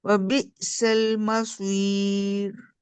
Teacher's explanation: आपने मखरज जैसे मसीर का मा बारीक, सौद मोटा किया है